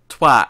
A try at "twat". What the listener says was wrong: You're saying with an O sound. It's not an O sound.